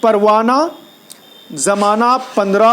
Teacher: ہا کا تلفظ نہیں ہوتا بلکہ ہا لکھا جاتا ہے لیکن پڑھا نہیں جاتا، تو اس کو بولتے ہیں ہائے مختفی۔